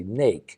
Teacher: for the longest time I I didn't pronounce esses so I would say instead of snake I would say nake